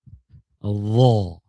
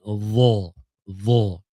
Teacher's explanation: Isti'la, mengangkat pangkal lidah.